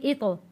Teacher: कलकला यानी कि आवाज़ पलट कर वापस आएगी। आवाज़ को या होंठों को कलकला करते वक्त हिलाना नहीं है।